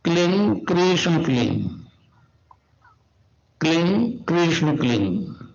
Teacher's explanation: उसका उच्चारण होगा क्लीन गा। गा की ध्वनि निकलेगी पीछे।